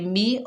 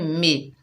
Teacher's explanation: मीम के नीचे ज़ेर है, बगैर खींचे पढ़ेंगे मी, और जब इसे मजहूल पढ़ा जाता है तो इसको बोलते हैं मे